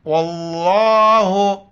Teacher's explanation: لفظ اللہ سے پہلے واو آ رہا ہے، حرف اس پر زبر ہے، اس کو لفظ اللہ کو موٹا کر کے پڑھیں گے